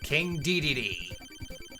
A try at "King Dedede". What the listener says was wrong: Dedede. You're putting the emphasis on the wrong syllables.